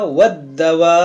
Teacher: दाल मुशद्दद है, बा भी मुशद्दद है, दोनों को खूब जमाव के साथ पढ़ेंगे क्योंकि हुरूफ़ क़लक़ला भी है, और इसको पढ़ेंगे दो दो बार, दोनों हर्फ को पढ़ेंगे दो दो बार।